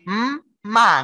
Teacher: Karena mim itu mulutnya menutup, ya. Jadi tidak mungkin suaranya keluarnya lewat mulut. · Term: gunnah